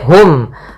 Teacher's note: Kemudian wala hum padafalla mad thi lagi ada alif eh maaf ada fathah bertemu alif hum itu ada izhar syafawi yaitu dibaca dengan jelas suara mimnya